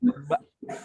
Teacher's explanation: Bak dulu, baknya yang penting pertahankan, jangan sampai udaranya keluar, jangan sampai udaranya berembus dari mulut, harus ditahan